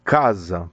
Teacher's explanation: Quando você tem paroxítona, casa, por exemplo, termina em A, mas a mais forte é a penúltima.